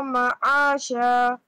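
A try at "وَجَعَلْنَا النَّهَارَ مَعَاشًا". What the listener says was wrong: You should apply alif madda here on ha again.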